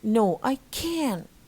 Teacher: both must be stressed and must be pronounced in their strong forms